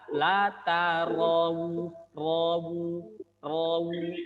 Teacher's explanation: Yang benar adalah la tarawu, rawu, rawu ya. Ro tidak monyong, ro tidak monyong, waw baru dimonyongkan. La tarawun, wun masuk ke hidung.